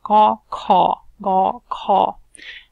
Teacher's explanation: And then you have, if you follow the horizontal lines, the first is according to where the sounds are actually produced. So those are the guttural sounds. Those are produced back in the throat.